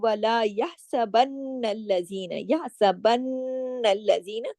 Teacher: نون پہ یہاں بھی شد ہے تو اس کی وجہ سے نون پہ غنہ ہوگا بڑا